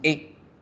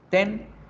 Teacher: En inglés, la letra E a veces va a sonar como la E es en español, neutral, la boca no se abre mucho, la lengua no se mueve, decimos E. La hacemos cortica.